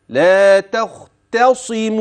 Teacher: التاء ترقق الخاء تفخم. التاء مرة ثانية ثم الصاد، لا تختصم.